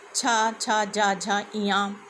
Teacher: इनका उच्चारण करते समय जीभ जो है तालु को मतलब स्पर्श करती है